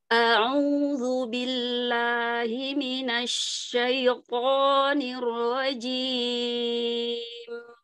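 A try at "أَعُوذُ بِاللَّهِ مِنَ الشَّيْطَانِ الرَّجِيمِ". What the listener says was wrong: Masih melalui rongga hidung. Nanti terus berlatih dengan cara memencet lubang hidung.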